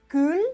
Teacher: se habría pronunciado cul, o sea, sin palatalizar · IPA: [kyl]